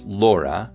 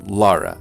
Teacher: most urban utahns pronounce laura while rural utahns favor lara a little bit more